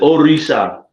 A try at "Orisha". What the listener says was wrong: Yeah, that's rolling your R's. What you're doing with the R is called rolling your R's.